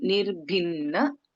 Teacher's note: In Nirbhinna, Bha is Mahaprana and we have Na and Na, Nirbhinna.